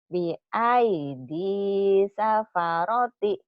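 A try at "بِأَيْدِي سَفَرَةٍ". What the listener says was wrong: Tinnya mana?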